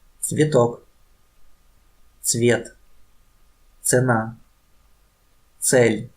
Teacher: C is similar to ts, but very fast and together.